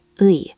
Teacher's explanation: Try to glide from u to i